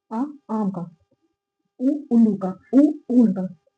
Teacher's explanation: ऐसा लगता है कि पीछे से जीभ ऊपर उठ रही है जहां से हमारा गला स्टार्ट होता है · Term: पश्च स्वर